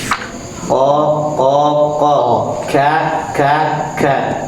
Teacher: Jadi huruf qaf itu bertemu pangkal lidah bagian tengah, bagian dalam bertemu dengan langit-langit yang sejajar dengan dia. Sementara kaf pangkal lidah bagian bawah bertemu dengan langit-langit yang sejajar dengan dia.